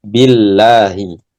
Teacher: Ketika dibaca sebelumnya kasrah maka dibaca tipis ya.